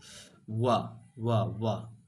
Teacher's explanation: हमारी जीभ जो है दांत को टच करती है, और ओंठ हमारे पूरे गोलाकार बन जाते हैं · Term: दंतोष्ठम